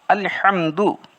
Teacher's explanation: ہا حویلی کا ہا جو درمیان حلق سے نکلتا ہے